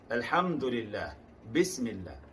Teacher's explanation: Pada lam jalalah itu, lafzul jalah, lafaz lam pada kalimah Allah, apabila didahului oleh baris bawah dibaca tipis